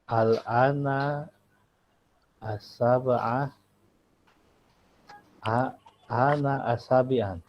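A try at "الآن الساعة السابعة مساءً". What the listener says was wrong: Al-ana as-sa'ah, jadi pakai ain, sa'ah pakai ain. Al-ana as-sa'ah as-sabi'ah masaan.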